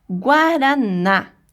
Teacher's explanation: na palavra por exemplo guaraná está na última sílaba então é uma palavrinha oxítona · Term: sílaba tônica